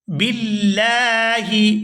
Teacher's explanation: قال اعوذ باللہ، یہاں با کو لفظ اللہ کے لام کے ساتھ ملائیں گے تو باریک ادا کریں گے لفظ اللہ کے لام کو کیونکہ اس سے پہلے زیر ہے